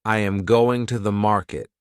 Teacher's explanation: the strong words are going and market. The small words are softer. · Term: rhythm